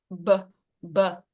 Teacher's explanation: cards where whereas if I make the sound sound B BB I'm using my vocal chords in order to make that sound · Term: voiced